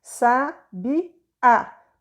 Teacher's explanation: esse encontro vocálico é de duas vogais que se separam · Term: hiato